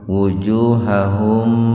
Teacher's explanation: Yadribu, jadi jangan yadribu, yadribu matabi wawu, wuju matabi wawu, hahum idhar safawi. Mim sukun bertemu wawu, jadi mimnya dibaca jelas Pak. Wujuhahum, biar terdengar jelas tahan 2 ketukan.